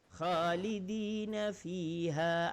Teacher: Kha di atas halqum naik. Halqum bagian atas. Kha ada getaran.